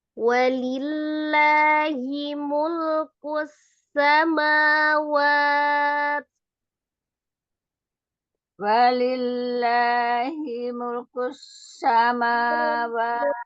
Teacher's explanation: Lillahnya juga sama. Nah, dia lafaz jalalahnya tipis ya, karena sebelumnya harokat kasroh.